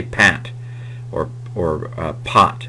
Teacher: because I've got to get to the T the middle sound doesn't hold as long and so it's considered short by the way um in our